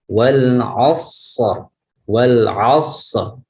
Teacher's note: Jadi ditebalkan karena ra tafhim atau dibaca tebal.